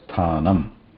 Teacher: we need to add like a pinch or a hint of akara at the end to bring out that ma sound anyway. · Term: makara